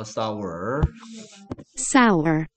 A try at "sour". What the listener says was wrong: shower가 아니야. shower면 이런 게 들어있어, 이제 shower. 그치? 싸 해봐, 싸. sour. 그렇지. 얘 분명히 sour라 그런다, shower라 안 그래?